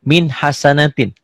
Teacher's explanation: Ditulisnya min hasanatin, dibacanya juga min hasanatin, tanpa ditahan, tanpa dengung. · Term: idhar